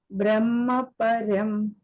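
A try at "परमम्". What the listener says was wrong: Paramam, Mataji, not param, paramam.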